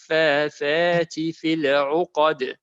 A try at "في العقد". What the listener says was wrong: Not fill it, it's في العقد. لام is silent. في العقد.